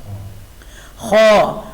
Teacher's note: خا حلق کے شروع والا حصہ جہاں سے ہم کھانا نگلتے ہیں ، کھانا نگلنے کی جہاں سے ابتدا ہے وہی خا کی